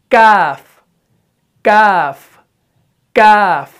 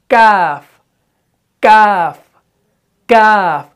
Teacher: लेकिन काफ में क्या होता है, जुबान का जो पिछला वाला हिस्सा है ये उठकर सख्त तालू से लगता है।